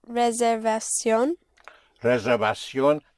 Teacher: The V is pronounced with your lips, with like a soft B.